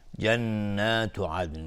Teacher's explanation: نون مشدد دو حرکت غنه میدیم